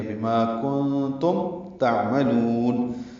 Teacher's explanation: کنتم من نون ساکن کے بعد تا آنے کی وجہ سے اخفاء ہے، یہ اخفاء حقیقی ہے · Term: اظہار شفوی